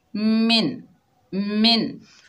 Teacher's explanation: नून साकिन को जाहिर करके पढ़ेंगे। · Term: इजहार हल्की